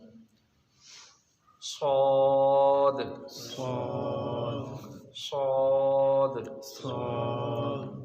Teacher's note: جہاں سے زا اور سین ادا ہوا وہیں سے صاد ادا ہوگا، لیکن صاد کی آواز موٹی نکلے گی